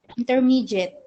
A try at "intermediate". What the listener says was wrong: Oh, I still hear the J. There should be a D. Mediate.